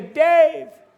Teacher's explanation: from far away, you can't hear the initial consonant